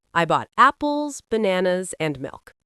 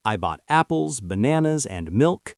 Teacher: And on the last item, your voice goes down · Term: rule for lists